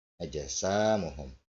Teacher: Sin di depannya alif ya, sinnya di fathah menghadapi huruf alif. Ini mad tabi'i. Ya, bacaannya dua harokat.